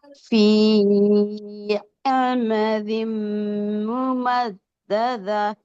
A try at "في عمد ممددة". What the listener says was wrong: ஆ ஆ ஃபீ ஆமதிம், ஆட உச்சரிப்பு வரணும். في عمد في عمد ممددة، في عمد ممددة.